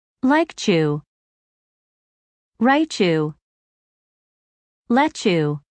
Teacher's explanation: when a word ends with t and the next word begins with y the combination of the two sounds changes to a CH sound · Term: linking